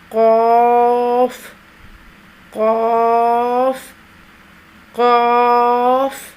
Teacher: 3 حرفی آواز اس حرف کی، اس کو 2 گنا کھینچ کر ادا کریں گے۔ زبان کی جڑ کو قوے کے ساتھ متصل تالو پر لگا کر موٹی پر آواز میں پڑھیں گے